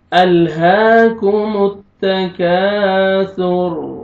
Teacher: یہاں پہ را کو پر کریں گے اور سا کا ساؤنڈ آئے گا، سین مکس نہ ہو